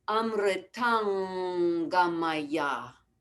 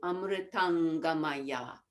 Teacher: So just to call your attention to the Anusvara in the middle of the 3rd line, at the end of the word Amritam, Amritam Gamaya will change to Amritangamaya. So the Anusvara, the nasal sound goes back to the throat so that we're ready for the Ga.